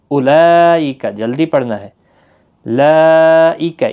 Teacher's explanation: لائک یہاں پر کھینچنا ہے، مد متصل ہے، 4 الف کی مقدار کے برابر کھینچ کر پڑھیں گے، کا کو کھینچنا نہیں۔